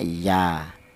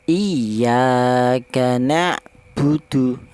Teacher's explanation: Berhubung ini ada alif, cara bacanya 2 harokat, lebih panjang dikit, atau 2 ketukan ya. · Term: matobi'i